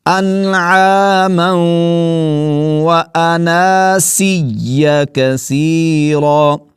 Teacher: اس لفظ کو بھی کچھ احباب جو ہیں وہ اناسیہ پڑھ جاتے ہیں، تو نون زبر، نون کے اوپر زبر ہے اور آگے الف ہے، تو اس کو الف کو ایک الف کی مقدار، یعنی آپ ایسا کہہ لیجئے کم از کم ایک الف کی مقدار اس کو کھینچ کر ہی پڑھیں گے